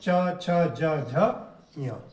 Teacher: जीभ जो है ऊपर उठता है और तालु को स्पर्श करता है, हवा को अवरोधित जो है ये करता है। तो हवा अवरोधित हो जाती है।